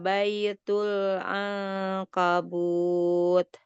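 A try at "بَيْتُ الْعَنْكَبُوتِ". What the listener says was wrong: bacanya kayak gitu? Kalau Mi bacanya tadi kayak macam angkabut, itu kalau dalam bahasa Indonesia itu bahasa pertanyaan. Sementara itu bukan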